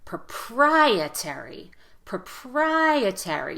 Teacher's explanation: you really want to stress the second syllable in proprietary that's the strongest syllable so make the vowel louder and longer here proprietary proprietary you hear how my vowel gets louder longer · syllable so make the vowel louder and longer here proprietary proprietary you hear how my vowel gets louder longer and goes up in Pitch